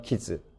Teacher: 키드즈라고 할 수도 있지만 키즈 드가 탈락할 수가 있습니다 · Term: 드 탈락